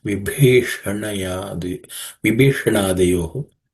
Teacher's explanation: This bha is again the fourth letter in the pa varga, so it has to be aspirated.